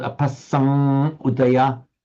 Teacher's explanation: you're allowed to turn the M into an Anuswara M, and that has the effect of making that a heavy syllable. So you wouldn't say apassamu, it becomes apassam udaya, it becomes long.